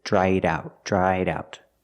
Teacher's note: change the verb into an adjective with Ed dried dried out I link the sounds with a fast D in the middle